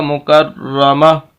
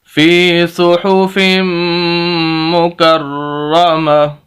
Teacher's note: ایک تو یہ کہ تا کو ہا سے بدلیں گے، اور دوسرا یہ کہ اس ہا کو ساکن کر دیں گے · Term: وقف